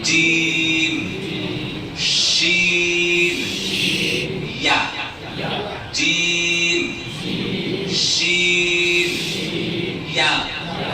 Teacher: بیچ زبان تالو سے ملے گا تو جیم ہے نا، جیم لگتا نا، زبان کا بیچ اور تالو میں لگتا نا، جیم، شین، یا، جیم، شین، یا۔ آپ پتہ کریں تو احساس ہوتا ہے نا زبان کا بیچ کا حصہ تالو سے لگ رہا ہے